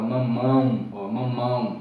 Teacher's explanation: Pode ser também nasal, quando o som sai mais pelo nariz, ele é som nasalizador, como a gente viu agora há pouco a palavra mamão, ó, mamão. Veja que você não abre bem a boca, sai mais pelo nariz. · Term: ditongos nasais